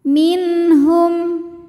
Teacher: Min ada hukum idhar halqi karena ada nun sukun yang menghadapi huruf halqi atau huruf tenggorokan yaitu ha, maka nun dibaca dengan jelas. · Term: izhar halqi